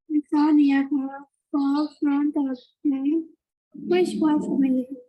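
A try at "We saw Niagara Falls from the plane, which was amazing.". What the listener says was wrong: But when you read, you need to pause because there is comma, right?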